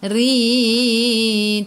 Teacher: Ra baca dengan baris bawah, kena baca dengan nipis, senyum. Rin. Tarqiq nama dia.